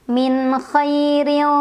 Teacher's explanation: Ra-nya dibaca dengan tarqiq. Karena ra berbaris dan barisnya di bawah kasrah. Maka bacanya tipis.